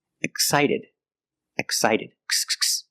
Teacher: You make a voice, gz gz, eggs, exit. And when the X is before a consonant, most of the time it's pronounced x x with no voice. Excited, excited, x x, no voice.